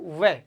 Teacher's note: वह के उच्चारण में जैसे आपके ऊपर के दांत आ गए और नीचे के होठ आ गए, नीचे के होठ, ये दोनों टच होके, यानी दांत और ओष्ठ, इसलिए इसको क्या कहते हैं, दंतोष्ठ। जब आप वह बोलते हो वह, तो दांत और ओठ दोनों टच होते हैं, तो ध्यान रखना है वह का उच्चारण स्थान है दंतोष्ठ। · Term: दंतोष्ठ्य वर्ण